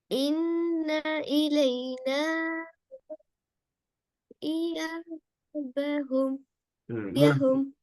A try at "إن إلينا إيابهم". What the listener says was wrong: அந்த இடையே ஹும் ஹம் ஹும் அப்படி வரக்கூடாது.